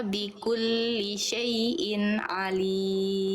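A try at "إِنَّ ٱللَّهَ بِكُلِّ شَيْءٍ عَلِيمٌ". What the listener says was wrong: Tebalkan lamnya. Jangan la. Angkat pangkal lidah.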